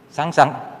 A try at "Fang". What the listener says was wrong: Fang. F. Pakai F. A N G. Fang. A N G.